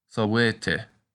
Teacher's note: this word is pronounced sawete with the accent on the A.